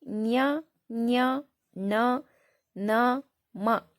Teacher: ಈ ಐದು ಅಕ್ಷರಗಳನ್ನ ಮೂಗಿನ ಸಹಾಯದಿಂದ ನಾವು ಉಚ್ಚರಿಸುವುದರಿಂದ ಇವುಗಳನ್ನ ಅನುನಾಸಿಕ ಅಕ್ಷರಗಳು ಅಂತ ಕರೀತೀವಿ